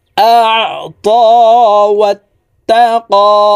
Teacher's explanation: হামজা আইন জবর আ, আইন হরফকে হালকের মধ্যখান থেকে চাপ দিয়ে উচ্চারণ করতে হবে, কারণ আইনের মখরাজ হালকের মধ্যখান থেকে হবে।